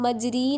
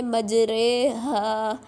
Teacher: رائے ممالہ وہ را ہوتا ہے جس کو ہم یا کی طرف جھکا کے پڑھتے ہیں، گرا کے پڑھتے ہیں. جیسے نیچے لکھا ہوا ہے، اب یہ را کے نیچے کھڑی زیر ہے، اس کو ہم مجری نہیں پڑھیں گے، اس کو ہم پڑھیں گے مجرے ہا، ٹھیک ہے، اس کو گرا کے پڑھتے ہوتے ہیں.